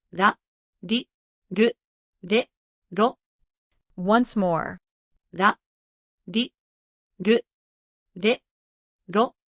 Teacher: The Japanese R is special — it’s light, between R, L, and a soft D.